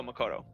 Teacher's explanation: they don't really stress any syllable more than the others